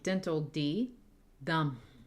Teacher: dental D, dum, with a voiceless M